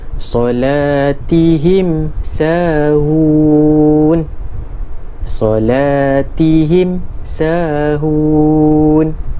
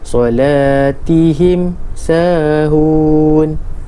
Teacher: cara baca dia bunyi mim disebut dengan jelas tanpa dengung. Izhar zahir ni jelas. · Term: izhar syafawi